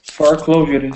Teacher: I can see your tongue is trying to roll with the r it's trying to sneak in and roll on the top